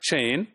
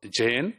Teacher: So in words like chain, the first sound is ch, or Jane, the first sound is j. Ch is voiceless and j is voice. And these are affricate sounds.